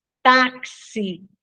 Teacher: x quando ele aparece com som de KS taxi né ó na palavra táxi o X tem som de KS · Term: dífono